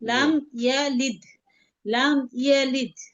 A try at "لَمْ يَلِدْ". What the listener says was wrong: না না, টান হবে না। শুধু ডালটাতে কলকলা হবে।